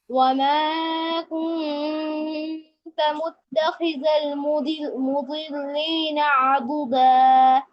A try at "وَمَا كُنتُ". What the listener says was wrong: এই যে ওমা কুনতা হয়ে গেছে ওমা কুনতু ওমা